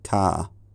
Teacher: have a low central vowel where the tongue is neither completely extended forward nor completely retracted backwards